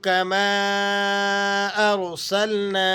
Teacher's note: آپ اسے کھینچ لیں گے اس وجہ سے کہ یہاں مد منفصل ہے. ارسلنا کے اینڈ میں جو مد ہے یہ بھی مد منفصل ہے اسے بھی آپ 3-4 سیکنڈ تک کھینچ کر پڑھیں گے.